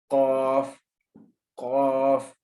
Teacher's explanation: ये मोटा हरूफ है, इसको पुर करके पढ़ना है, ये याद रखना है आप लोगों ने, पुर करके इसको अदा करना है। · अक़साए लिसान नरम तालु से मिले तो कौफ अदा होगा